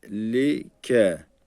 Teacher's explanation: Arkadaşlar bu Peltek Z'yi uzatacağız çünkü üzerinde Asar var